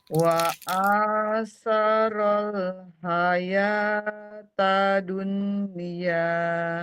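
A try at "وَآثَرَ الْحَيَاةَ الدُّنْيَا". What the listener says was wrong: Nah, tasdidnya hayatad dunya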